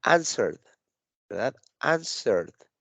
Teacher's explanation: Entonces, fíjense, answered. Pareciera que aquí estoy omitiendo la letra E y estoy juntando la R con la D.